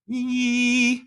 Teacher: what people tend to notice is that vowels like Yi feel really forward and vowels like ah tend to feel really in the back